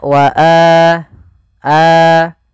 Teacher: Alif wau atau ya maka itu kita namakan dengan mad badal panjangnya adalah dua harakat sebagaimana Mad Thobi'i